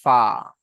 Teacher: নিচের ঠোঁটের ভিজা অংশ এবং সামনের উপরের দুই দাঁতের আগার সাথে লাগে উচ্চারিত হয় ফা